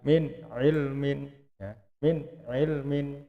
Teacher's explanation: Nunnya tidak boleh didengungkan